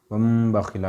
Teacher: تنوین و نون ساکن کے بعد با آئے تو نون کو میم سے بدل کر غنہ اور اخفا کے ساتھ پڑھیں گے، اس کو اقلاب کہتے ہیں۔